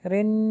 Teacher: next ہے میں پھر اخفا ہوگا، میں شر رن، را کو نون سے ملائیں گے اور یہاں پہ غنہ ہوگا